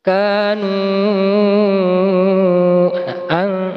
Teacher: bacaan panjangnya lima harakat atau 2,5 alif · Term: mad jaiz munfasil